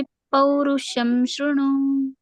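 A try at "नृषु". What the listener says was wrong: ನೃಷು ಮಾತಾಜಿ, ಅದು ಶೃಣು ಅಲ್ಲ, ನೃಷು. ಶಬ್ದಕ್ಕೆ ಪೌರುಷಂ ನೃಷು.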